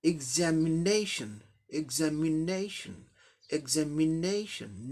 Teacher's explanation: ने सिलेबल है इसलिए यहाँ स्ट्रेस आएगा ने पर